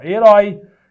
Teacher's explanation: Quando eu falo a palavra herói, herói é uma oxítona que termina com esse ditongo aberto, ó, herói. Então aqui tem acento, aqui mantém o acento.